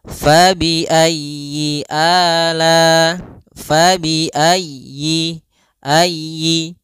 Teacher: Pada lafal fabi ayyi ala, di sini usahakan huruf ya-nya ditekan